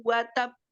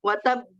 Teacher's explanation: Seakan-akan ada hamzah di akhir kalimat. Wa tabb. Ditahan dulu karena di situ ada tasdid, kemudian baru dikolkolahkan. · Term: akbar